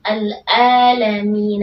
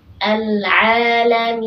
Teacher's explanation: Seharusnya huruf ain yang keluar dari tengah tenggorokan